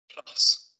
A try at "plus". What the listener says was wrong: Yes, plus.